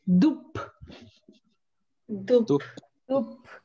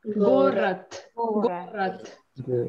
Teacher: at the end of the word, we usually make them voiceless. So if it's B, then you should pronounce it like P.